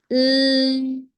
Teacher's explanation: L, is a continuous sound, right? And it is also voiced sound क्योंकि आपके vocal cords use हो रहे हैं.